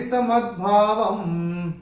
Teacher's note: व के ऊपर जो अनुस्वार है चरण की समाप्ति पे है, इसलिए इसका उच्चारण केवल और केवल म ही होगा